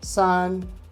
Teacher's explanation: If you can hear the tone, it's flat. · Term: first tone